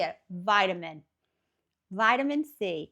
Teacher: that T is more of a soft kind of duh kind of sound